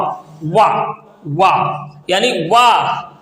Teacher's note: ये वा दांतों से भी निकलता है, ओठ से भी टकरा कर निकलता है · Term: दंत ओष्ठ